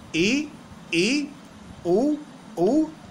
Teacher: स्वरों का वर्गीकरण पहला समृत स्वर समृत स्वर क्या होता है इन स्वरों के उच्चारण में हमारा मुख द्वार सकरा हो जाता है